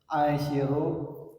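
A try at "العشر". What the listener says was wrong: Pakai dibaca alnya, al-asyiru.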